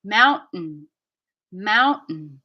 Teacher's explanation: so the end of mountain is very quiet i'm just doing this push with here and it's coming out